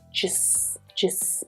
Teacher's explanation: so just is unstressed you just hear the schwa just just and hear how the two words actually come together